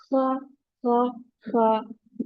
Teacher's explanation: Kha sound comes from the top of the throat, which is nearest to the mouth. Top of the throat, okay?